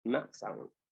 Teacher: So ma sound is made by closing both lips